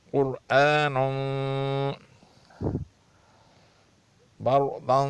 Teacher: را ساکن ہے، اس سے پہلے زبر آ رہی ہے اس لیے اس را کو موٹا پڑھنا پڑے گا